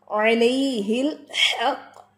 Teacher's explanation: ایک تو یہ ہا آپ کا واضح ہونا چاہیے وسط الحلق سے